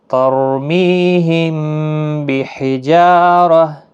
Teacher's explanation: ترمیہم بحجارہ، ہم دیکھیں یہاں پر اخفاء شفوی، دونوں ہونٹ ملتے ہیں اور گنگنی آواز ناک میں ہوتی